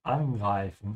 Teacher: notice how I'm emphasizing the prefix because this is a separable verb